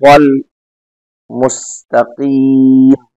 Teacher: مستقیم میں سین ہے، اس میں سیٹی بچتی ہے